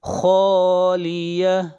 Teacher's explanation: خا کو موٹا پڑھیں گے، خا حروف مستعلیہ میں سے ہے